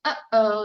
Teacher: that little apostrophe signals that little tightening in your throat we call it a glottal stop